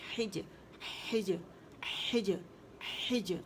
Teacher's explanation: جیم کے مخرج پہ باقاعدہ جائیں گے آپ، ٹھیک ہے، اور وہاں آواز باؤنس بیک ہوگی، قلقلہ ہوگا